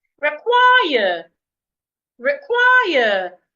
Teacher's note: I'm stressing the second syllable.